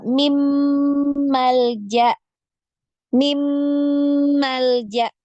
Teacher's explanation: secara sempurna masuk ke huruf mim tanpa kita harus dengungkan dulu huruf nunnya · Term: idgham Kamil